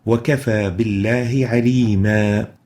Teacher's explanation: Originally, there is a tanween, and this word is aliman, but due to the fact that we have paused on it, then we replace this tanween with a med. So upon stopping recitation on a fatha with tanween, as in this case, we would substitute this fatha tanween with an alif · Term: substitute med